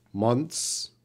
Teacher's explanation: this is more difficult because we have an N TH sound. So we gotta get the consonants blended together.